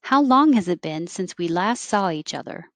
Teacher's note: a question that's a how or who what why when where you start high with the question word and you start going down and then if there's an important word that is the point